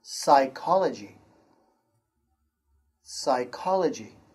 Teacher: P is silent at the beginning of a few words. The P sound is silent, like this word, psychology.